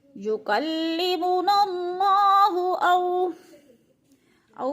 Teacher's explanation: वॉलीन को लंबा भी नहीं करना और झटका भी नहीं देना